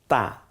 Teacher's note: একটা হলো তা, এটা বলার সময় মুখটা ফাঁকা হয়ে যাবে, জিব্বার আগা দাঁতের গোড়ার দিকে চলে যাবে, সামনের দাঁতের